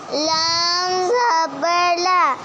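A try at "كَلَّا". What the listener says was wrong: نہ لام الف بھی ہے ساتھ.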